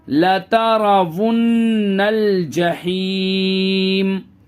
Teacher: stop کریں گے تو لاسٹ میں سکون لے آئیں گے میم پہ